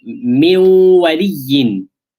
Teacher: noon and waw merging with one another, nasalization for two harakas. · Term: idgham with ghunnah